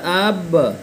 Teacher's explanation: قلقلہ کہتے ہیں جب پڑھیں گے ساکن کو تو وہ ٹکرا کے پھر الگ ہو جاتا ہے، دونوں ہونٹ سٹتے ہیں اور پھر فوراً کھل جاتے ہیں